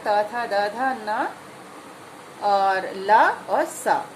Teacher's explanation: अब जैसे ऋ बोलेंगे या त, थ बोलेंगे तो हमारी जीभ दांतों को टच करती है, दांतों पर मारती है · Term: दंत वर्ण